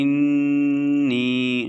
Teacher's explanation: جب ہم حمزہ کو نون کے ساتھ ملائیں گے تو ہم غنہ کریں گے، ٹھیک ہے، یعنی کہ ناک میں آواز، نون کی آواز کو تھوڑا سا ہم لمبا کریں گے، انی، نون یا زیر نی، ٹھیک ہے۔